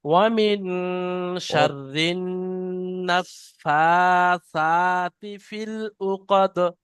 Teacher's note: নাফাসা, ফাটাও টান, সাটাও টান, আর নুনটা গুন্না।